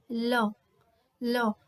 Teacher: इसके उच्चारण में स्वास वायु जीवा के दोनों पार्श्वों से निकलती है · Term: पार्श्विक व्यंजन